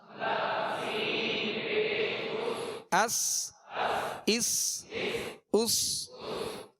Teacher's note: سین کو سیٹی کی آواز میں سختی سے ادا کریں گے